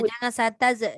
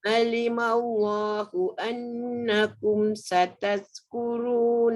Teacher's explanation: Zal bukan zai. Kalau sataz dia jadi zai. Sataz. Ujung lidah keluar.